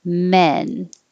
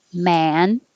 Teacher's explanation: your jaw is higher and your tongue is higher more flat